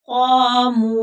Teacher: क़ाफ मोटा है, पूर पढ़ा जाएगा, हरूफ मुस्तालिया है और आगे अलिफ मद्दा है तो इसको थोड़ा खींच कर पढ़ेंगे